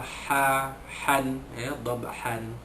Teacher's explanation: Kemudian fal mughirati subha, sama macam sebelum-sebelumnya qadha dan dhabaha, ba sukun itu dilantunkan lemah jadi qalqalah sughra